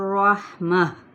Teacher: ये गोल ता है, ताए मरबूता है, जब हम वक्फ करेंगे तो हा में बदल देंगे